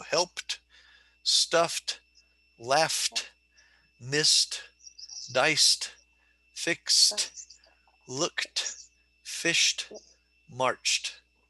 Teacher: the final ed is pronounced like the letter t in cat